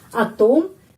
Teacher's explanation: di sini penekanannya pada huruf o jadi O tetap bacanya o